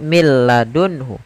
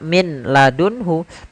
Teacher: Contoh di sini millun hu tidak dibaca min ladunhu tapi langsung ke huruf lam karena nunnya dianggap tidak ada dan diidgamkan ke huruf lam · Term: idgham bila ghunah